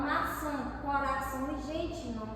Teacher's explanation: nessas três últimas palavras que ocorre a nasalização